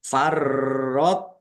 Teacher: tok sukun bacaan qalqalah dibaca memantul.